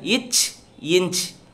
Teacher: நாவின் இடைப்பகுதி நடு அன்னத்தின் இடைப்பகுதியை பொருந்ததால் பிறக்கின்றன